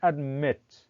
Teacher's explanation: the two syllable uh verbs in which the second syllable is stressed